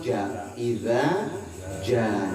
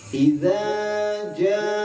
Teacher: Mad wajib berarti harus dibaca panjang lima harakat